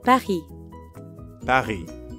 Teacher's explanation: Notice how the S at the end of Paris is silent again.